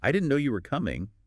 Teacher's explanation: try it with a little lift, a little emphasis on no and coming.